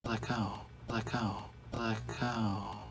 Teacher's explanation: let go, creating a stop of air with the throat